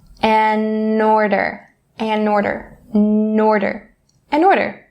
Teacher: You bring that N sound over to order.